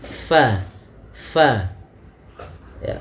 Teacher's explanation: Bibir kita rapat, padahal huruf fa ada sedikit furjahnya, ada sedikit ruang yang kosong yang mana untuk mengeluarkan nafasnya